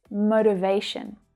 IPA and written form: ˌməʊ.tɪˈveɪ.ʃən (Motivation)